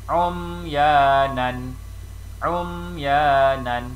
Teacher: Ini adalah izhar syafawi. Maka huruf mim bertanda mati atau mim bertanda sukun mesti dan perlu dibaca dengan jelas tanpa dengung.